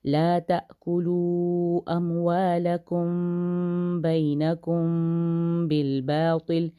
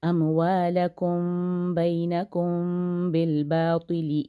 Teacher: لا تأکلوا اموالکم بینکم بالباطل، اخفا شفوی ہے دونوں جگہ پہ، میم کے بعد با آ رہا ہے تو ہم یہاں پہ تھوڑا سا غنہ کریں گے، اس کو کہا جاتا ہے اخفا شفوی.